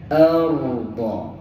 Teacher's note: Dia ada takrir dia, ada getaran.